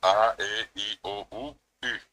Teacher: En guaraní es seis vocales orales y la sexta es la u, la i de agua.